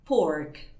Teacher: En cambio, en el inglés americano la nombramos, la pronunciamos esa letra, la letra R, y decimos pork para hablar de esta palabra, ¿sí?